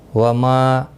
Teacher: ما الف مدہ ہے، ایک الف کی مقدار کے برابر کھینچ کر پڑھیں گے۔